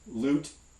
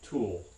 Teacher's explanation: in the light one usually the tongue tip part is preceding the tongue body part whereas in the dark one you tend to get this tongue body movement happening before the tongue tip movement is complete and it has a very different sound sometimes written that dark